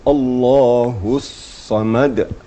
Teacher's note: Sadnya ada tasydid. Dia harus ada penekanan pada tasydid.